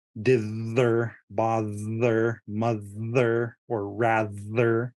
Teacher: There's also the th in the middle, which is voiced.